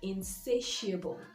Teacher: notice that stress is on the second syllable